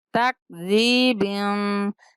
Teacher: یہ کاف جو ہے حروف کلکلا کا نہیں ہے، یہاں پہ ہم کلکلا نہیں کریں گے